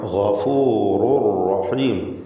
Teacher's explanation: റുൻ എന്നതിലെ തൻവീൻ പൂർണ്ണമായും ശേഷമുള്ള റായിലേക്ക് മണിക്കാതെ ലയിപ്പിക്കുന്നു. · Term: ഇദ്ഗാം ബിഗൈരി ഗുന്ന